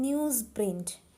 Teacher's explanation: we can see Z sound is replaced by S sound. Okay, under the influence of another sound. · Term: assimilation